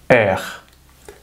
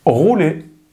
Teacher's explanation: Si tú lo piensas, dentro de tu boca, al fondo de la boca, tu lengua tiene como que dejar pasar muy poco aire entre tu boca y el paladar